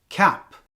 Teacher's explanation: the word cap as you say the word cap you can feel the back of your tongue closing to block the air for the C